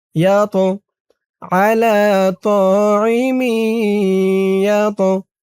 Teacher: ইয়া দিয়ে আবার এই তকে ধরবে। তটা কলকলার হরফ, ধাক্কা দিয়ে পড়তে হবে।